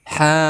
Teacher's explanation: ha panjang 1 alif atau 2 harokat karena di sini hukumnya mad tabi'i. Ada huruf mad tabi'i yaitu alif sebelumnya berharokat fathah.